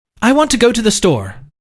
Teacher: Native speakers stress key words: Example: “I WANT to GO to the STORE” You mainly hear: WANT – GO – STORE.